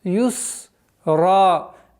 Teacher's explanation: При остановке на ра у нас аннулируется танвин, остается алиф. И в размере двух огласовок мы его удлиняем.